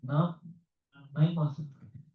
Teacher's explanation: The end of the varga, the air is coming out from the nose.